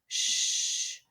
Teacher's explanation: Put your hand here and make it sh. You don't feel anything vibrating in your throat.